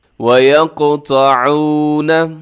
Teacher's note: قاف کو اپنے ہلانا ہے، اس کی آواز کو ڈبل کرنا ہے، کیونکہ یہاں پر قلقلہ ہو رہا ہے